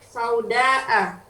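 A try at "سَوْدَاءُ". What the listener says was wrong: Sauda'u ya. Harokatnya jangan sampai salah. A-U-I. Iya, sauda'u. Karena kan dia naat Ibu ya, dari hakibah.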